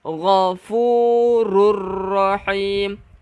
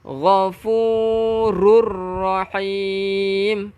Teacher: Saya kata dah, bila kata nun kosong bertemu dengan ra ataupun tanwin 99, nampak tak bentuk 99 bertemu dengan ra, kita masukkan tanpa dengung yang digelarkan ke bahasa Arabnya idgham bila gunnah